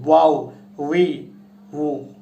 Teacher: ওয়াওটা উচ্চারণ হয় হচ্ছে 2 ঠোঁটের মাঝখান থেকে হালকা একটু ফাঁকা করে আমরা ওয়াওটা উচ্চারণ করি